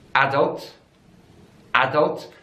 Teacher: different in the world so in British English is adults adults so the stress is on the first syllable